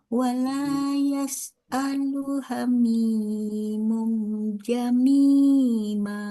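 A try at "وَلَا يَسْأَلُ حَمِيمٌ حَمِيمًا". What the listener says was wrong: Hamima, bukan ja.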